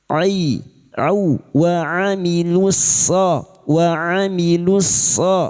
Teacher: 'ain is a sukun wastul halqi, from the middle of the throat.'